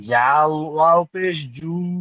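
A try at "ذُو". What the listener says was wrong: ও শোনেন, জাল নয় ভাইজান, সব ভাইজানকে বলছি। হ্যাঁ, জিহ্বা বার করে তিনটি অক্ষর বলতে হয়। জাল, সা, জাল, ভ। তা জাল আবার এরকম পড়বেন সব ভাইজান, ছাড় ছাড় করে পড়বেন। জাল, থামবেন। ওয়াও, থামবেন। পেশ, জু, এমন করে পড়েন খুব সুন্দর করে।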